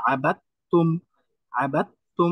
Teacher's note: তো এটাও এক প্রকার ইদগাম, এখানে দালটা উচ্চারণ হবে না, দালটা তার সাথে মার্জ হয়ে গেছে, এই জন্য তাটাই এখানে উচ্চারণ হবে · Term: ইদগাম মুতাজানিসাইন